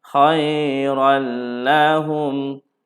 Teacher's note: Maka ini adalah hukumnya idgham bila gunnah tanpa dengung tanpa dengung.